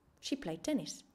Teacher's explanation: played also finishes with a T sound and tennis starts with a T sound so we omit the first T sound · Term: same sound rule